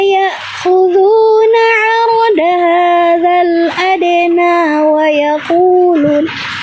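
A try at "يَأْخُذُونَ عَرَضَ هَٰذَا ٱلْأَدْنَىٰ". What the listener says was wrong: Oke, bukan arodal, arodo ya. Oke. Jadi itu kurang tenang.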